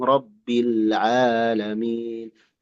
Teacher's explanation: Ainnya Bapak jangan masuk ke hidung